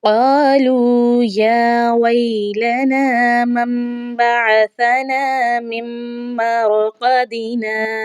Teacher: قالوا یا ویلنا من بعثنا من مرقدنا، میم میم کو میم کے ساتھ ملانا ہے یہاں، کیونکہ دوسرے میم کے اوپر تشدید آ چکی ہے تو یہاں پر ہم نے کیا کرنا ہے، میم کو میم میں مدغم کر کے ہم نے پڑھنا ہے، را کو پور پڑھا جائے گا۔